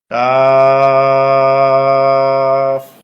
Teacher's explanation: বলতে হয় কাফ এই হরফটি বলতে চার আলিফ পরিমাণ লম্বা হবে জিহ্বার গোড়ার একটু আগে তালুতে লাগবে স্বাভাবিক উচ্চারণ হবে